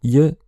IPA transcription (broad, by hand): j